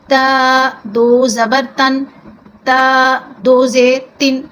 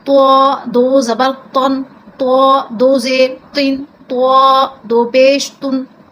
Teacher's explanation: یہ تا باریک ہوتا ہے، یہ تو کیونکہ حروف مستعلیہ میں سے ہے تو اس کو ہم پر کر کے پڑھتے ہیں